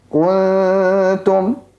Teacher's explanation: jangan sampai dibaca seolah-olah kunya itu panjang, ada wawunya atau panjang